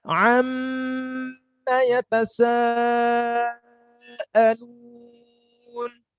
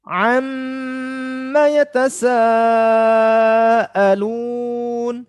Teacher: Jadi mem yang bertasydid. Kalau kita buka tutup hidung kita akan terasa gunnah atau dengungnya. Terasa banget dengungnya.